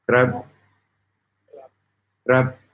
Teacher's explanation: The masculine ending is pronounced with a high tone, which starts at mid-level and rises.